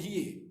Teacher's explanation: Imalah ni huruf ma bainal fathah wal kasrah.